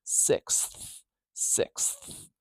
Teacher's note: We've got a k, s, th combination. This we call a consonant cluster. It's a three-sound consonant cluster.